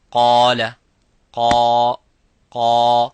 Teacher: For example, if I say qala, qa, qa, so the alif is mufakham, it is a heavy because of the qaf. So whenever the letter is heavy, you make the letter alif qaf, the letter alif of mad heavy.